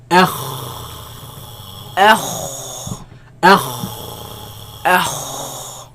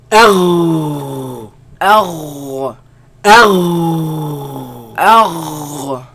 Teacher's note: They come from the top part of the throat, right? Where the root of the tongue raises against the uvula and produce a sound.